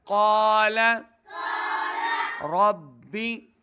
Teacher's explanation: قاف حروف مستعلیہ سے دو نقطوں والا، اس کو موٹا پڑھنا ہے